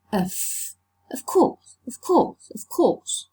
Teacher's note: Regressive because the voiceless sound k affects the previous one, which is v, and has become f, to become voiceless too. And it's assimilation of voice because it has to do with the state of the glottis, with the vibration of the vocal cords. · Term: regressive assimilation of voice